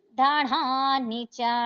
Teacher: ధనా లో ధ మహాప్రాణాక్షరం శ్రెస్ ఇవ్వండి, నాకి దీర్ఘం.